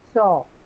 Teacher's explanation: So, C-H-O-R-E has a long O sound, not a diphthong.